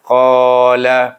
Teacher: Kemudian qala, pasal qa panjang kerana qa ada alif di sana. Qa itu huruf isti'la, pangkal lidah terangkat. qala, iaitu mat asli hukumnya.